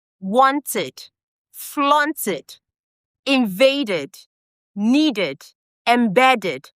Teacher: We use id when the ed comes after the t sound or the d sound.